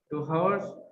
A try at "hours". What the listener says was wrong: Bukan H, tapi dibaca A. Hours. Hours.